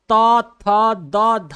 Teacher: आप त थ द ध बोलेंगे तो आपका जबान दांत में सट है